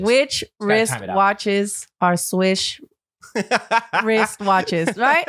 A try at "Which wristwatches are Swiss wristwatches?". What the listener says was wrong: Sort of. You said swish.